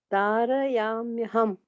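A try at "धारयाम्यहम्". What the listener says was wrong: Perfect. Yes.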